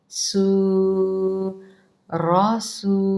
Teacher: آپ چیک کریں، آپ کے پاس لکھے ہوں گے۔ را زبر را، سین پیش واو سو، یہ سیٹی کی آواز ہے